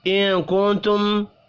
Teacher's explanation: دو نون ساکن ہیں، دونوں پر اخفاء ہوگا، میم مشدد پر غنہ کریں گے، یا مدہ کو ایک الف کے برابر کھینچ کر پڑھنا ہے۔